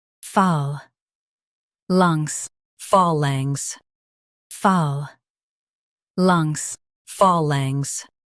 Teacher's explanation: In UK, stress phal and soften langs.